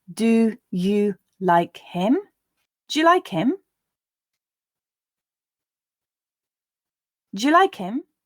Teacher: the d also often changes to j in do you questions because again we're not pronouncing that schwa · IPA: /dʒ/